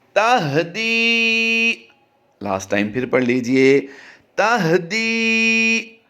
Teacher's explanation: دی کو ہم لمبا کریں گے، یہاں پر یا مدہ کا قاعدہ ہوتا ہے